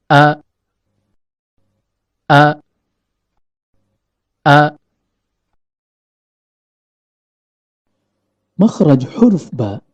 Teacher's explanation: dijelaskan tenggorokan Terbagi 3 pangkal tenggorokan Tengah tenggorokan dan ujung tenggorokan huruf hamzah keluar dari pangkal tenggorokan